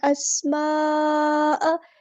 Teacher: مد آ گئی ہے، کنیکٹڈ مد ہے، مد متصل ہے، 4 یا 5 کاؤنٹ ہمیں لمبا کرنا ہے